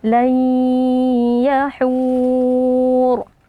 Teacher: nun sukun kita masukkan ke dalam huruf ya disertai dengan ee dengung atau dengan ghunah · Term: idgham bighunah, idgham bi gunnah